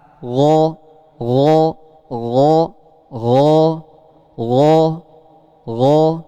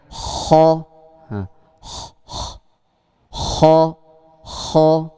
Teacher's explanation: Ghain itu tidak mengalir nafasnya.